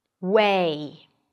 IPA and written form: weɪ (way)